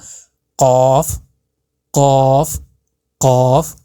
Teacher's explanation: آپ کے جو حلق میں چھوٹا سا گوشت کا لوتھڑا ٹائپ ہے اس سے آپ کو یہ ٹچ ہوتا ہوا محسوس ہوگا